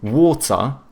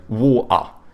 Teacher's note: they do a schwa instead of pronouncing the R, so they say water or they say water.